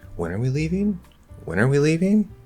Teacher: i used a lot of really strong rising with a certain inflection